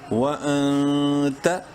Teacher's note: واو زبر وا، حمزہ نون زبر ان، نون ساکن کے بعد تا حروف حلقی میں سے نہیں ہے، اخفا کریں گے اس نون میں